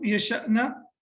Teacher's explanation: we recite it with a small jerk and we say yasha'na